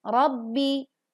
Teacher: Ro berharokat fathah maka dibaca tebal. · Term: ro tafkhim, Ro Tafkhim